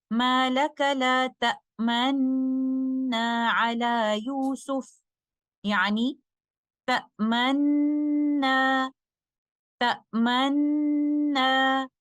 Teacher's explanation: we merge the first noon into the second one with ishma which is circling of the two lips